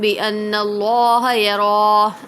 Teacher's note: اللہ کے لام سے پہلے زبر ہے تو اللہ کے لام کو پر پڑھیں گے